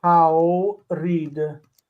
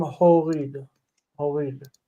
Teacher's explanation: So get used to AW becoming O.